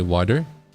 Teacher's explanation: you have an American style accent that has that tap